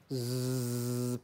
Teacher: The tip of the tongue moves towards the upper teeth but doesn't touch it. Okay, doesn't totally block it. There is narrowing but no blocking.